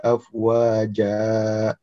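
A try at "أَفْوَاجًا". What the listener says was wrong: Tidak ditekan ya, afwaja. Tidak boleh afwaja.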